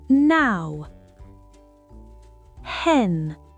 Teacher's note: le bout de la langue touche les gencives supérieures. L'air sort par le nez.